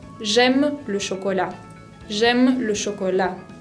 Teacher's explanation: se usa un tono descendente descendente lo que se puede decir grave · Va para abajo la voz, es grave.